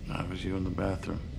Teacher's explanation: This means that the T sound isn't fully pronounced, and instead is cut off at the back of the throat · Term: glottal T